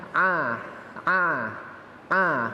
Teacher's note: Ain dari tenggorokan tengah